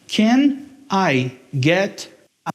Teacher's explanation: esse T vai mudar o som para um r, que é chamado de tap, or flap T. Então, ele tem aquele som que parece com R, de arara ou aranha, esse r.